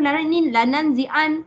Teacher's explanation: dengung yang pertama adalah pada huruf nun yang tak ada baris. Huruf nun yang tak ada baris tu nun yang kedua.